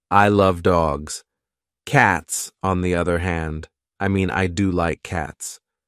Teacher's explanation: Benedict stressed the key words he wanted to emphasize. Love, cats, do, and ever.